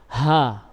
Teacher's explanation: Ha ini makhrajnya adalah pada pita suara. Enggak ada yang menghalanginya untuk keluar. Ha. Jadi bukan di dada ya.